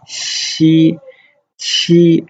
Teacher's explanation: Notice that the X and Q characters, xi and qi, are more aspirated than spat out. So we don't really spit the character out, we just say xi, qi, like sh.